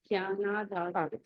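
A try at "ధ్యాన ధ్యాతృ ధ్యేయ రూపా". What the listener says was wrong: ఇక్కడ ఏదంటే ధ్యాన యాతృ ధ్యేయ. ఎక్కడ నేను గీడు తీస్తున్నానో మీరు చూడండి. ధ్యాన, ఒక నిమిషం వినండి వినండి. ధ్యాన యాతృ ధ్యేయ రూపా. ఇప్పుడు చదవండి. మీరు కూడా ధ్యా అంటున్నారు. ధ్యా కాదు, ధ్యాన. ధనం అనండి, ధనం. అలాగే ధ్యాన, ధ్యానం అనండి.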